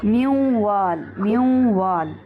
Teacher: میوں وال، ہم نون کو نہیں پڑھ رہے، ہم نون کو واو میں مدغم کر رہے ہیں. نون کو واو میں ہم نے داخل کر دیا اور واو کی ساؤنڈ ہلکی ہلکی آنے لگی ہے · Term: ادغام